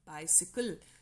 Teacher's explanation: bi is stressed syllable si is unstressed kal is also unstressed so by sickle bicycle so stressed syllable followed by two unstressed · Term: ductile meter